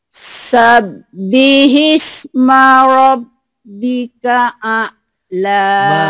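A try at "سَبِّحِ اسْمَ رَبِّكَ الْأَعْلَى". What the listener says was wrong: Marabbikal, masuk kal ya. Sabbihis, jadi kalau ketemu sukun nyamber, ketemu tasjid nyamber dan double. Jadi sini nyamber nih.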